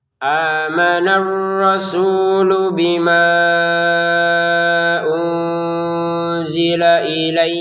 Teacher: Amanah dua harakat panjang ya karena ada alif.